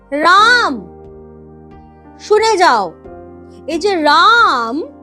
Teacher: স্বরধ্বনির টেনে দীর্ঘায়িত উচ্চারণ তাকেই আমরা বলি প্লুতস্বর